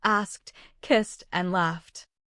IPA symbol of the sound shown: t